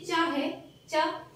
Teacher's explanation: चा ये तालु से बोला जाता है